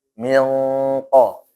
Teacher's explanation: Walladzina min qablikum pakai ng tapi yang tebal.